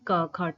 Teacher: ऐसे वर्ण जिनको उच्चारित करने के दौरान जो है स्वर तंत्रिका में नाद नहीं होता। कंपन नहीं होता। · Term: अघोष